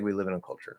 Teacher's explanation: So we is not stressed, in is not stressed, a is not stressed, and it's being reduced to and then in culture we have the chur at the end is not stressed.